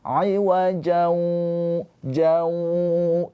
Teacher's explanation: Tanwin dileburkan ke huruf wawu, ditahan 2 harokat. Jangan buru-buru nanti bacanya. Ditahan 2 harokat dengan suara keluar dari hidung. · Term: idgham bi gunnah